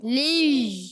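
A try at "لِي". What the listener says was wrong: لش کی آواز نہیں آئے. لی.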